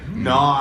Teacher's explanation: in your accent, N-O has almost every single vowel sound in it